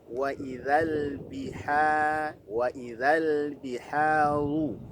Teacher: ru-nya tebal karena ro-nya berharokat dhammah